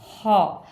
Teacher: हलक के ऊपरी हिस्से से खुरदरी सी आवाज़ हम बाहर निकालेंगे तो हौ की आवाज़ बनेगी।